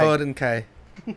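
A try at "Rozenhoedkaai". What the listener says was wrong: no N.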